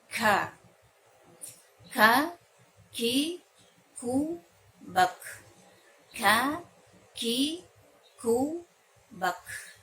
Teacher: Kemudian sifat dari huruf kaf juga adalah di samping ya syiddah, huruf kaf juga hurufnya sifatnya adalah hams, yaitu ada hembusan udara ketika mengeluarkannya.